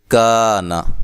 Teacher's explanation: کاف باریک حروف میں سے ہے، اس کو ہم قونا نہیں کہیں گے بلکہ کانا